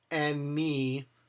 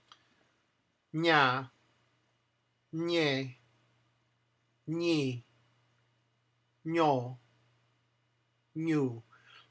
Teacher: The Nye is with the flat part of the tongue on that ridge. N, enye. So actually you're curling your tongue.